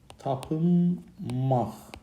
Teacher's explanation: N samiti M kimi tələffüz olunur, Q samiti X kimi tələffüz olunur